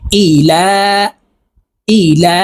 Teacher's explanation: এই লামকে এক আলিফ টেনে পড়বো